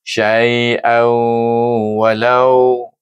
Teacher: kalau saya menyambung saiu dengan hukum idgham maal ghunnah kerana huruf wau adalah huruf idgham